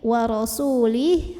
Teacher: kalau berhenti jadi sukun ya, karena hanya bisa jadi mad silah qasirah apabila nyambung. Jadi kalau berhenti wa rasulih haknya sukun.